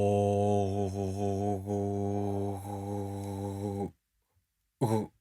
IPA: ɯ